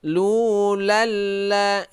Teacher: idgham bila gunnah. Jadi tidak berdengung. Lu lal la. Dia itu seperti bertasydid, ya.